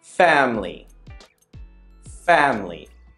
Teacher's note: could you hear that the middle vowel disappears the eye that syllable is omitted because it's a weaker sound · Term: dropping a syllable